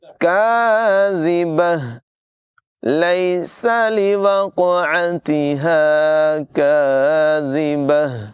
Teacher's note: کاف کی آواز باریک ہوگی، زال کو بغیر سیٹی کے پڑھیں گے، آخر میں گول ہا کی آواز نمایاں ہوگی